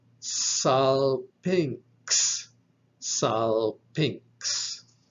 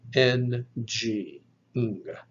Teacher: So this is your nasal yama, where the yama preceding a velar consonant takes on the sound of ng, ng.